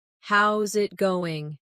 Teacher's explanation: A native speaker would say, "Hey, how's it going?" Notice that they don't always say every word slowly and clearly. Instead, how is it going becomes how's it going? The is disappears and the final G in going often softens. This is called connected speech.